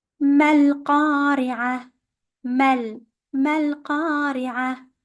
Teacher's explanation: we have to change the tamarbuta into a very soft ha